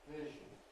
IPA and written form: ˈvɪʒn̩ (vision)